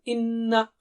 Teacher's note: نون پر غنہ ہے. ناک سے آواز ڈبل حرکت.